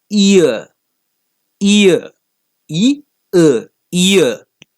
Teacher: begins with an e sound and ends in an uh sound